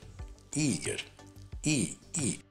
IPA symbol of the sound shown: i